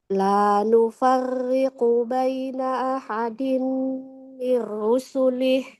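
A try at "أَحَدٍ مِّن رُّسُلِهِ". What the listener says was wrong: Roknya tebal Ibu. Ahadim mir rusulih. Mir rusulih.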